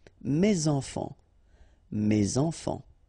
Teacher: So it goes like that, and then ending with s. Enfant, children is starting with a vowel, so you should make the liaison